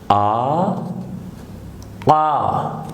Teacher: حلق میں تھوڑی سی رکاوٹ کے ساتھ.